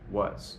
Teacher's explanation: the A in was actually is not ah. It sounds more like up